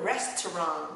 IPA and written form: ˈres.trɒnt (restaurant)